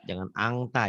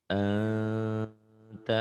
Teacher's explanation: Yang ini enta, bindeng Oh, tetap enta tapi masih antara n dan g. Jangan angta dibacanya kan kurang enak.